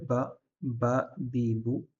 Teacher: les lèvres ensemble. Ça, c'est le premier point de sortie des lèvres